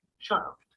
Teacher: When we use the auxiliary have after a modal, we pronounce the two words together. The word have loses its sound and is linked to the modal before it